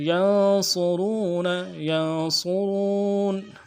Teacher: صاد کو موٹا ادا کریں گے